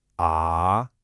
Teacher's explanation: Your voice actually dips down first and then it comes back up. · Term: third tone